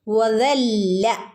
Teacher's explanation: നമ്മളെ നാവ് മുകളിലുള്ള പല്ലിൽ തട്ടിച്ചാൽ മാത്രമേ ദ എന്നുള്ള ശബ്ദം നമുക്ക് കിട്ടുള്ളൂ